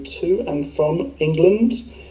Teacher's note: Here we can see the way that he reduces the word and to n. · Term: reduction